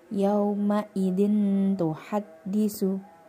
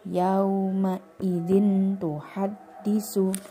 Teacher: Yauma idin ditekan 2 harokat disertai dengung. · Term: ikhfa